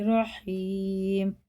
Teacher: یا ساکن سے پہلے زیر ہے تو کھڑے زیر کی طرح کھینچ کے پڑھیں گے